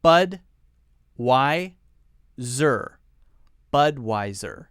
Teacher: notice that we're stressing the first syllable here